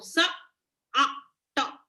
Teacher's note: So we can hear the schwa every time after every sound.